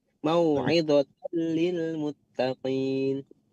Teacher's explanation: untuk mauidhotan itu idghom bilaghunnah jadi mauidhotan lilmuttaqin, hati-hati terbaca dengung atau dilamakan di situ, hati-hati. · untuk mau'izatal itu idgham bila gunnah